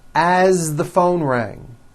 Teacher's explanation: As, you pronounce it with a voiced Z.